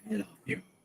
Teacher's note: gonna make it just a tiny little bit breathy